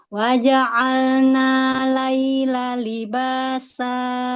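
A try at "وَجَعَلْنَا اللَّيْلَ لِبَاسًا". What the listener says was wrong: Langsung ke lam. Wa ja'alnal lail malam ya, huruf samsiyah langsung masuk ke lam. Lamnya tasydid.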